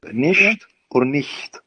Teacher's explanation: it's like y, but it is voiceless